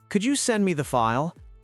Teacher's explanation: Go up on file. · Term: the request